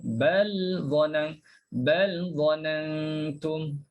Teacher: kalau baca hafs, bal ada lamnya, bal zanantum. Clear bunyi lam tu.